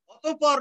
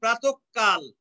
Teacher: তাহলে কোন শব্দের মাঝখানে যদি বিসর্গ থাকে তাহলে বিসর্গর পরের যে ব্যঞ্জন ধ্বনিটি সেটি দুবার উচ্চারিত হবে, দ্বিত্ব হবে